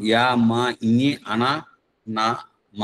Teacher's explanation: నాసిక్యములు అంటే ముక్కు ద్వారా పలికేటివి